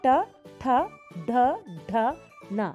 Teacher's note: ನಾಲಿಗೆಯನ್ನು ಮಡಚಿಬಿಟ್ಟು ಮೇಲ್ಭಾಗಕ್ಕೆ ಮುಟ್ಟುತ್ತೆ ನಾವು ಉಚ್ಚರಿಸಬೇಕಾದ್ರೆ